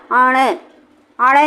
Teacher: लेकिन अब हमें इसका उच्चारण कैसे करना है, अपनी जीभ को पलट करके अब हमें ऊपरी छत पे ले जाना है, जीभ की नोक को ऊपरी छत पे लगाना है। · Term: मूर्धन्य वर्ण